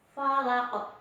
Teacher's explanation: ada huruf qaf berharokat kasroh yang letaknya di akhir ayat, maka dibacanya harus dipantulkan. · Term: qalqalah